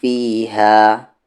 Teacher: دھیان سے اسے فیہا پڑھنا ہے، عربک میں پھا نہیں ہوتا ، فیہا، نون پہ تشدید ہے، غنہ کے ساتھ پڑھیں گے،